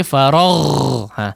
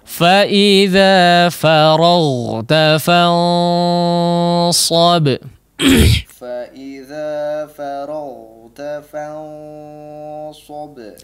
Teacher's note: Huruf ghain diperhatikan ketika kondisinya sukun. Faragh masih mengalirkan suara. Jangan mati menjadi g, faragh ya, atau mantul faragh ya.